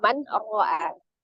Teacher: Nun sukun atau tanwin bertemu dengan huruf ra adalah salah satu hukum idgham bila gunnah, ya. Maka ditasdidkan saja ke huruf ra-nya, tetapi tidak disertai dengan berdengung, gitu. Berarti tidak ditahan, ya, tidak dimasukkan ke dalam rongga hidung suaranya, hanya ditasdidkan saja.